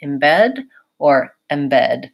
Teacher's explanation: And there's not really a significant difference there. So the most important thing that you want with this word is that you're very light and short on that first vowel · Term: unstressed vowel